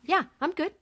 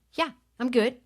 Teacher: talking with her upper register from a tighter voice